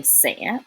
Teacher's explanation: in the north they don't distinguish so they just say say it just sounds like a regular s